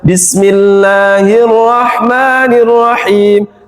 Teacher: sifatnya ha itu rikhwah, dilepas saja. Bismillahirrahmanirrahim, haknya dilepas saja, tapi harus nyampe sini.